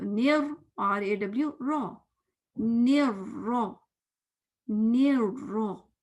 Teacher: फिर रॉ में आपका स्माइली फेस नहीं रहेगा, क्योंकि आप जेर तो नहीं पढ़ रहे, आप तो जबर पढ़ रहे हैं, फतह पढ़ रहे हैं। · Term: रॉ मोटा है